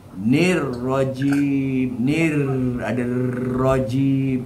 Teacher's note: ni rajim tu try tarik huruf ra punya sifat takrir. Nir rajim, nir ada rajim, yang tu itu maknanya sifat takrir.